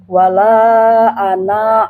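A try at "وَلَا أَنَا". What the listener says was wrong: Enggak, ana jangan panjang ya. Enggak, jangan panjang.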